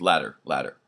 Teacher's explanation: they both use a tap in the middle for the T and the D · the tap is actually used widely in American accents